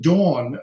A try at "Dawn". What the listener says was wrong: not Don. Don is a man, like Don Amici or Don Jose. Dawn. Look at the mouth. Dawn. Dawn, because there's a W there. Pronounce the W. Dawn.